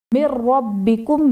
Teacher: نون ساکن کے بعد حروف یرملون میں سے را آ رہا ہے تو یہاں پر ادغام بلا غنہ کا قاعدہ ہوگا یعنی نون ساکن میں غنہ نہیں کریں گے